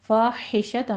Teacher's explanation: ہا وسط حلق سے ادا کریں گے